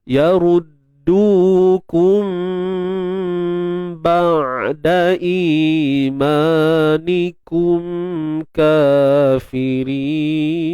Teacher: Ikhfa syafawi ni kita tutup bibir bersahaja.